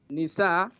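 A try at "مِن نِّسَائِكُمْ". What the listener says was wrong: You skip. You said min. Not nisa. Min nisaikum.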